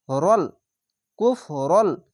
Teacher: বাদ দিয়ে উচ্চারণ করবেন কুফরন এখানে রল এই লামের সঙ্গে মিলবে যদি লামের সঙ্গে যদি না মিলতো তাহলে রন নুনের মত উচ্চারণ হতো এই লামের সঙ্গে মিলছে তার জন্য রল কুফরল এখানে গুন্না বাংলা